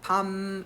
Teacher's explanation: 평성은 낮은 소리예요. 소리를 밤 이렇게 낮게 내라는 소리야.